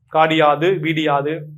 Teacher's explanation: இகரம் தன் ஒரு மாத்திரை அளவிலிருந்து அரை மாத்திரையாக குறைந்து ஒளிக்கும்